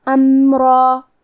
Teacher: کلمت امرا میں میم ساکن ہے تو ہم میم کو ظاہر کریں گے. را پہ تنوین زبر ہے، ہم یہ کلمہ پہ رکیں گے تو تنوین زبر پہ مد الف سے رکیں گے، اور حرف را کو اور مد الف کو دونوں کو تفخیم سے مطلب بھاری آواز میں ادا کریں گے.